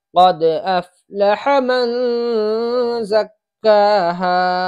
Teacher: قد افلح کے ہا کو کھینچ دیتے ہیں، یہ غلط ہے، بلکہ اس کو ذرا سا بھی نہیں کھینچنا چاہیے۔ قد افلح من زکاہا، یہاں نون پر اخفا ہوگا، اس لیے کہ نون ساکن کے بعد حروف اخفا کے 15 حرفوں میں سے زا رہا ہے، اس لیے یہاں پر اخفا ہوگا۔